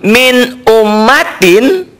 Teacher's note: maka bunyi nun matinya tetap dibaca n. Tetap apa adanya. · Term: idhar